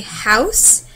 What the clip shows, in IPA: h or Ø